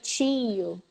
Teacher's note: So the words like tio and frio, in Minas, we emphasize the I.